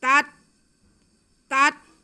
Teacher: पहले ता को हम दूसरे ता से मिला लेंगे लेकिन आवाज़ हिलने नहीं देनी।